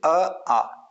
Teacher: एक कंठ स्वर यानी इनका उच्चारण जो है कंठ से होता है